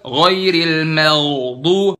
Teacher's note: Ghainnya bener di situ posisi ghain, cuman terlalu dalam, kelamaan, kepanjangan.